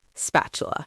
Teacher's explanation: The way the tongue moves makes the T softer. Spatula. This happens with a lot of T sounds in English when they fall between two vowels. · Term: soft D